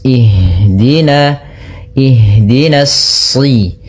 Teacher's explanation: Maka kita baca di sini bukan uhdina tapi ihdina. Kemudian pada lafal ha usahakan di sini mengalir nafasnya dan lembut. Ada namanya jaroyanu an nafas.